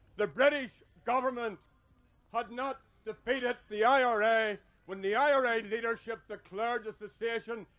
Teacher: there's a short Central vowel that appears in the words British government and Leadership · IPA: [ɑ]